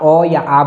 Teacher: आप अ या आ बोलकर देखिए ये कंठ से ही उच्चारित होते हैं।